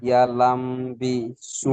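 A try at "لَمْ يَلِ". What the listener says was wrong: ইয়া, ইয়ালাম হয়ে গেল। লাম ইয়াল এই সবে বললেন, আবার আপনি ভুলে গেলেন। লাম ইয়াল বি। হ্যাঁ, এটা মনে রাখতে হবে, লাম ইয়াল বি।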